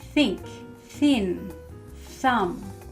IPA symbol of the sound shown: θ